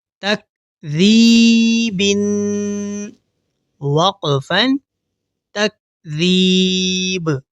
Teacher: اب یہاں ذال کو دیکھیے. ذال کو ادا کرتے ہوئے ہماری زبان کی نوک دونوں دانتوں کے درمیان ہلکی سی باہر رہے گی، اور یہاں با حروف قلقلہ میں سے ہے، تو وقف کرنے کے بعد ہم با پر قلقلہ کریں گے.